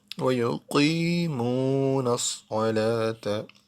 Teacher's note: Qaf and Sad heavy letter, musta'aliya letter. So we say both letters with full mouth.